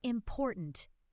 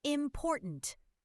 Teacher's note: The second syllable is stressed. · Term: Word stress